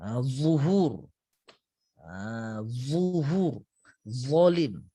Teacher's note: Huruf za ini tuan-tuan dan puan, dia kena keluarkan sedikit lidah kita. · Jadi hujung lidah keluarkan sedikit dan ditemukan dengan hujung gigi seri atas.